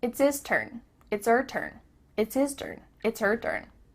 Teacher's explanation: The H at the beginning of his and her is cut off.